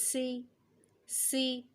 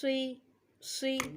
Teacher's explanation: اس میں سیٹی آئے گی سین کے اندر، اس کے اندر بھی سیٹی آئے گی